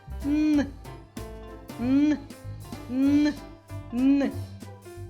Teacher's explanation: мовчить і знову вимовляй звук н н н н горло дзвинить ми відчуваємо вібрацію голосових зв'язок